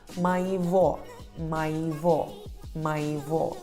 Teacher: Primeiro O se torna A, segundo E se torna I e o G é pronunciado como V